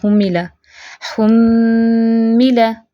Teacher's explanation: मीम मुशद्दद है, गुन्ना भी होगा, भरपूर गुन्ना करना है